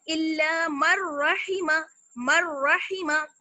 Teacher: नून की साउंड बिल्कुल खत्म हो गई, नून की आवाज बिल्कुल खत्म हो गई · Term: इदगाम